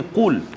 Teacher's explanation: qaf dia duduk pangkal lidah kan, dia dekat belakang. Di dekat dengan anak tekak kan